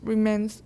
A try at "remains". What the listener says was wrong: Remains. Make it longer.